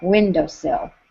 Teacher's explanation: A bird shivers once on a warm window sill. Uh when naturally we would say window sill as a dactyl